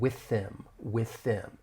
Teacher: We're going to link that voiceless TH in with that vowel sound